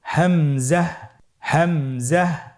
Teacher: হামজা হরফটি উচ্চারণের ক্ষেত্রে বারিক করে উচ্চারণ করতে হবে এবং এখানে টেনে পড়া যাবে না। দ্রুত পড়তে হবে।